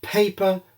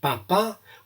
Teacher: the airstream of aspiration makes the paper move. And you can practice saying words without letting that happen.